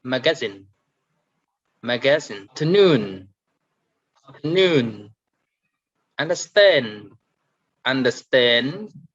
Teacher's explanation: the last three words here we are going to stress at the end of each word